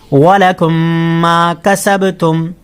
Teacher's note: میم ساکن کے بعد دوسری میم آ گئی تو یہاں غنہ کریں گے